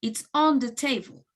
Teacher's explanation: So the fact that the bag is something that both people know about, it makes not the bag being the important thing of the conversation. So as the most important thing in this case is the current location of the bag, we are stressing the preposition on